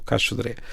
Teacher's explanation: vamos dizer aquilo de forma mais rápida e mais descontraída, e por isso o cais do sodré torna-se no caixodré